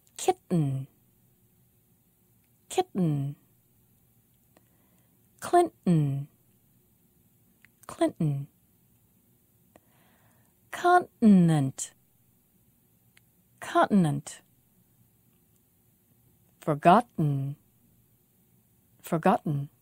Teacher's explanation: be sure you make a complete stop of the air. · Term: glottal stop